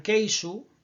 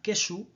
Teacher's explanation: En el bloque occidental, uno de los rasgos más característicos y más fundamentales serían la presencia de diptongos decrecientes e o, principalmente en sílabas tónicas